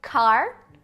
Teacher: o K, é desvozeado, porque não tem vibração das pregas vocais